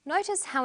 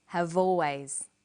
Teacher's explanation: in conversation we link the final consonant sound V